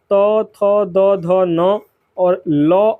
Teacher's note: तो इन सभी वर्णों का उच्चारण दंत से होता है।